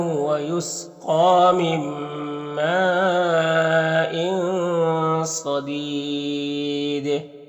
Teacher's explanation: اور یہ جو مد ہے مد متصل ہے۔ یہاں پر تنوین کے بعد صاد حروف اخفا میں سے تو تنوین میں اخفا ہوگا، تنوین کے بعد کو ناک میں چھپا کر ایک الف کی مقدار کھینچ کر پڑھیں گے۔